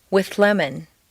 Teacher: see how the th moves back and the L moves forward to meet in a new middle position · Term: composite sound